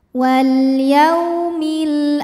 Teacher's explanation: ada hukum alif lam yang dinamakan dengan alif lam qamariyah karena alif lam menghadapi huruf qamariah yaitu Hamzah maka lam sukun dibunyikan dengan jelas